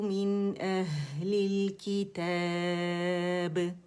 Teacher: کتاب ہم نے 4 کاؤنٹس کھینچ کے با کو باریک قلقلہ دیا